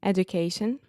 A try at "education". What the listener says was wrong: So I was almost hearing education with the do, but it was kind of right in the middle. But this is a really interesting thing in English because we say education. So you can imagine the word you is actually in there. So education.